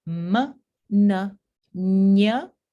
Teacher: El modo número 5 son las nasales. Todas las consonantes nasales se pronuncian con el velo del paladar que se baja un poco y el aire que sale por la cavidad nasal. Entonces, obviamente, son consonantes nasales porque los labios están cerrados y el aire sale por la cavidad nasal.